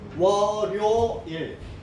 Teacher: 이때는 니은 첨가가 아니에요. 그냥 연음입니다. 연음. 월요일이에요.